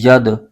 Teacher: تو دال یہ حروف قلقلہ میں سے ہے، اس کو پڑھتے ہوئے قلقلہ کی آواز آئے گی، یعنی آواز لوٹتی ہوئی محسوس ہوگی